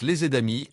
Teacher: les amis se prononcent les amis avec un son Z entre les deux mots liés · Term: liaison